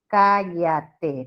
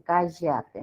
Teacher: la zona andina diferencia la doble L con la Y. O sea, ellos te van a decir cállate con doble L, no como en la costa que dicen cállate, ¿no?